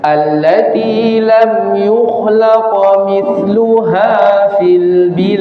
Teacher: Jadi qalqalahnya sughra, menyambung.